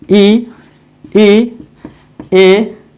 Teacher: ये हो गए अग्रीय, यानी कि जो आगे वाले जीभ से बोला जाता है उसको बोला जाता है, जीभ के अगले भाग से, उसी को बोला जाता है अग्र स्वर